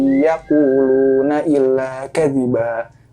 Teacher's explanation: In yaqulu. Nah, karena nun mati dan setelahnya adalah huruf ya, jadi berlakulah di situ hukum idgham bigunnah, ditahan panjang 3 harokat.